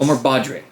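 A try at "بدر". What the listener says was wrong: I think you're pronouncing it wrong. Badr. It's difficult for native speakers to get the D and R together. So it's Badr.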